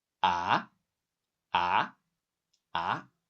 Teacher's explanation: The second tone A, the pitch is rising, like you're asking what?